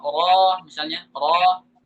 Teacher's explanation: ra bukan huruf isti'la, tapi karena dia tebal, kondisi tebal, maka alif ditebalkan